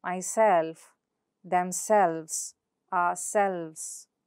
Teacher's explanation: in reflexive pronouns, the second syllable is usually stressed. For example, myself, themselves, ourselves.